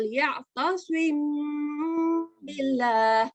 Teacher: meme sakina followed by letter ba, and we do light gunna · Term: ikhfa